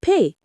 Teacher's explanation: The P sound is made with both lips and there's no vibration.